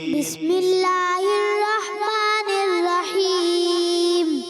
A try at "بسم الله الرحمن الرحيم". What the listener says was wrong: پیارے بچے را کو پر کرنا ہے. تعوذ میں بھی تھوڑی را کمزور تھی، اب بھی را کو پر بھی کرنا ہے، ٹھیک ہے. بسم اللہ الرحمن الرحیم.